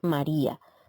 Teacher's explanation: Vemos que la sílaba tónica cae en la vocal débil, que es la I, por lo tanto, deja a la A en una sílaba diferente.